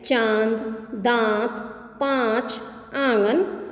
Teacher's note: अनुनासिक यानी इसका उच्चारण करते समय ध्वनि नाक और मुख दोनों से निकलती है और इसका चिन्ह जो होता है चंद्रबिंदी होता है।